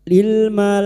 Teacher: Bertemunya mad dengan hamzah dalam satu kalimat. Mad wajib muttasil lima harakat kita panjangkan.